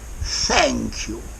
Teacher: the oo sound at the end of the thank you is very much elongated again. Okay, the vowel is stretched.